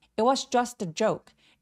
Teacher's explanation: 워낙에 문장에서 많이 쓰이는 문장 패턴 같은 경우는 T를 무시하고 그냥 it was 이렇게 발음합니다.